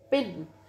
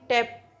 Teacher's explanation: तो जब पफ बनता है जब आप पिन के केस में पिन लेकिन टैप उसमें वैसा पफ नहीं बनता